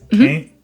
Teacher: there's a pronunciation of can't as /kɪnt/